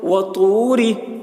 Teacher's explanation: وطو، را زیر ری، را کے نیچے زیر ہے، زیر کو جلدی پڑھیں، تھوڑا بھی نہ کھینچیں، معروف پڑھیں، مجہول آواز سے بچیں. وطوری، سین یا زیر سی، یا ساکن سے پہلے زیر ہے، یا مدہ ہوا، اس لیے یا مدہ کو ایک الف کے برابر کھینچ کر پڑھیں گے.